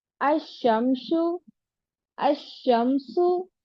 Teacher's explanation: शमसी दोनों हालतों में लाम का इदगाम होता है। इसको इदगाम शमसी कहते हैं।